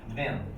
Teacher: We never say the TH in them